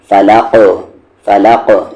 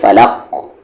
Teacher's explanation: رکنے کی وجہ سے قاف پر جزم آ جا رہا ہے، اور قاف پر جزم آیا تو یہاں پر قلقلہ ہوگا ، فلق، فلق نہ کہ فلق، یہ غلط ہے، فلق، آواز